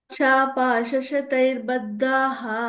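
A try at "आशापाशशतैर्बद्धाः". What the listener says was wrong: బద్ధాః, అక్కడ ఓ మహాప్రాణం ఉంది. ఓకే, అందులో ఆ శ్లోకంలో ఏ మహాప్రాణం చెప్పలా మీరు, అందుకనే అది ఫుల్ చెప్పమంటున్నాను నేను.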